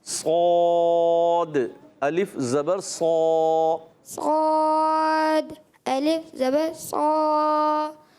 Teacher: الف کو باریک نہیں کرنا، جب حروف مستعلیہ کے ساتھ جو الف آتا ہے نا اس کو پر رکھنا ہے آخر تک